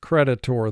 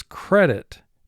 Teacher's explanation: Because the accent mark, the emphasis in this word goes to the first syllable